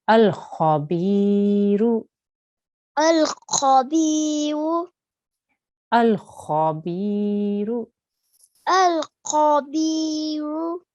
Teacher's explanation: thick kha and a thick ra. So make sure you have your nice round mouth there to say those letters.